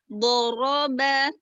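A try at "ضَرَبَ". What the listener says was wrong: Terus do-nya kayaknya ada ini ya. Bo sama ro-nya kayak agak memisah gitu. Coba diulang lagi.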